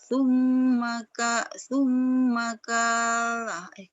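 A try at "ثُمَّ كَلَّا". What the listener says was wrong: K-nya pendek karena itu bukan alif itu lam. La-nya yang panjang ya.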